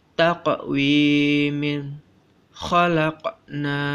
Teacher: huruf qaf terdapat sukun jadi membacanya dipantulkan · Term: Qalqalah